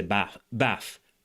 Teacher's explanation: An f." But, in the Cockney accent the th sound is actually pronounced as a as an f as a f sound. It's not written with an F, but it's pronounced with a F. So they say bath bath.